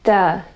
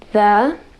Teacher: producing the D instead of the voiced th sound